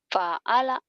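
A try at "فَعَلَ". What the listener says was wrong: Fa'ala, nggak ada yang panjang.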